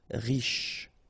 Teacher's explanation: Final E not really pronounced, so sh is the last sound.